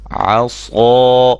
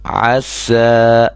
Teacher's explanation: صاد موٹا ہے, موٹی آواز اس کی آئی ہے, باریک یعنی کہ نہیں اس کو پڑھنا ہم نے